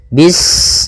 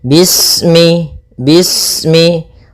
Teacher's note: Pada bacaan bis ini sempurnakan huruf sinnya. Ketika sinnya sukun, ini ada sifat shafir, dia harus kita alirkan nafasnya. Bis, nah seperti itu sempurna, baru baca mi.